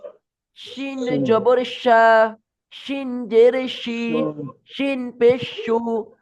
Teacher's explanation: এইটা করবেন জিহ্বার মাঝখানের বরাবর, তার উপরে জিহ্বার মাঝখান যেখানে আছে সেই বরাবর তালুর সাথে চাপিয়ে লাগিয়ে বলবেন